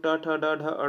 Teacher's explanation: तो मूर्धन्य में होता है हमारा ट वर्ग।